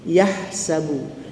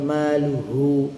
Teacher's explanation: Jadi ha tengah halqu ha pedas adapun ha bulat di pangkal halkum